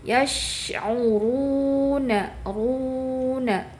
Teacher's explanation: pada saat ru itu di pangkal lidah dinaikkan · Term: ro dibaca tebal